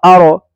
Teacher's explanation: یعنی را پر زبر تو نہیں لیکن را سے پہلے ہے تب بھی را موٹی ہوگی